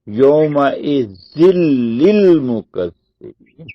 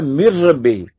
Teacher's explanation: مکمل طور پہ ادغام ہو گیا اور نون کی آواز ختم ہو گئی. حالانکہ نون لکھنے میں ہے، یومئذ میں نون ہے جیسے زال زیر نون زن، لیکن پڑھنے میں نہیں ہے. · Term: ادغام کامل